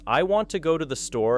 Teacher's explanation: tap on want, go, and store, allowing I, to, and the to fit naturally between the stronger beats